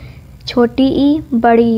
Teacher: तालु से छोटी ई, बड़ी ई उच्चारित होती है।